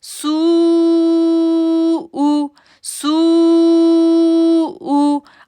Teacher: سو کو ہم نے 6 سیکنڈ کے لیے کھینچنا ہے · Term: مد